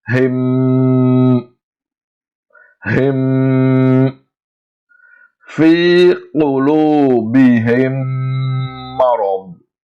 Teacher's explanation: pronounce the Mim sound with Gunna. That means prolong the joining sound approximately 2 times its original length.